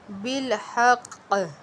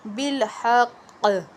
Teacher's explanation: تو جب مشدد حرف ہوگا نا یعنی تشدید والا، تو تشدید اس کی باقی رہتی ہے لیکن حرکت ظاہر نہیں ہوتی، حرکت ختم ہو گئی۔ ہا قاف زبر حق، قاف زیر قی، جو قاف کے نیچے زیر تھی نا وہ ختم ہو گئی لیکن تشدید باقی رہی۔